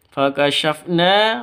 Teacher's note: 'Na' memiliki panjang dua ketukan. Karena terdapat huruf alif yang didahului oleh huruf fathah, maka disebut mad asli atau mad thabi'i.